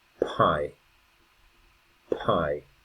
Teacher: One thing that happens with the English language is the p sound is more aspirated.